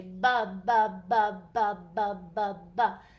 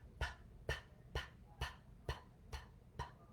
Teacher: There's no vibration. So p is considered what's called a voiceless sound, and b is voiced. Now the reason that these two sounds are partners is because they are both produced at the lips in the same exact way.